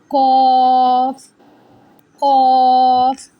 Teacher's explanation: The back of the tongue rises and touches the soft palate.